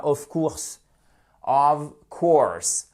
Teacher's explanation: le of ici se prononce comme un ve